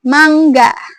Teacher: eng ini dia termasuk ke bunyi nasal, teman-teman. Ya, jadi aliran udara itu keluar dari rongga hidung, bukan dari mulut. Contohnya seperti kata mangga.